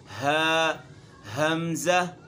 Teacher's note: हलक का वो हिस्सा जो सीने की तरफ है उससे अदा होता है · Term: अदना हलक